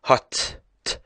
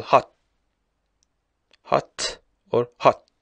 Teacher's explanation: the final T sound in words such as hot and, for example, cat may be released with a puff of air